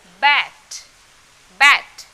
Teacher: जब हम बी ए टी बोलते हैं, तो यहाँ पर ए का उच्चारण ए हो जाता है